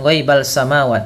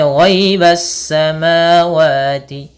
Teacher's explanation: Pada lafal as-sama, di sini ada alif lam alif lam syamsiyah, yaitu alif lam yang ditulis tapi tidak dibaca langsung ke huruf sin